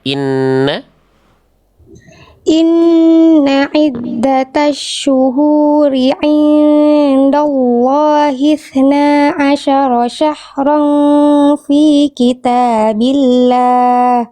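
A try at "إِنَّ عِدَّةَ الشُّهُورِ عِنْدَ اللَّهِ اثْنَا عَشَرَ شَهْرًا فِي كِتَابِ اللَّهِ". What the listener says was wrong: Sudah bagus cuman H-nya kurang ngarir. Ee tadi lafaz allahnya bagus sekarang H-nya harus betul-betul terasa dari pangkal.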